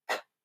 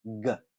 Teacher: we have some velar plosives, the voiceless one and the voiced one. So k and g, k, g.